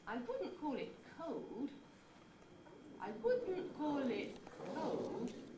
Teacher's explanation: just a very gradual fall it's not a big steep fall that you get on a nucleus · the pitch starts high, but then falls gradually throughout the head. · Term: falling head